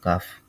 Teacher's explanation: জিহ্বার গোড়া থেকে একটু আগে বাড়াইয়া তার বরাবর উপরের তালুর সঙ্গে লাগিয়ে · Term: মধ্যখান পেঁচানো কাফ